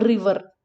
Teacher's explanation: regardless of the position of r it is pronounced like a roll or a tap